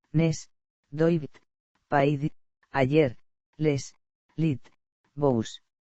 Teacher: las siguientes palabras terminan en consonante, pero en su pronunciación acaban en un sonido vocálico